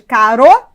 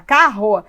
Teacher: o r no meio de duas vogais tem o som fraco